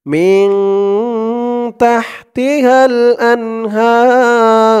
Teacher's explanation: এই জিম চিহ্নতে থামার কারণে রর উপরে যে পেশ আছে এই পেশটা সাকিন হয়ে গেছে। হা বলে 3 আলিফ টান দিয়ে এই র কে ধরতে হবে, রর উপরে পেশটা সাকিন হয়ে যাবে। 3 আলিফ টান মধ্যে আরজি।